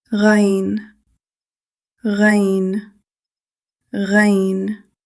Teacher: Ghayn comes from the upper throat. Their articulation points are close, but not the same. · It is slightly higher than the articulation point of Ayn. You should feel a gentle vibration in the upper throat while pronouncing this letter.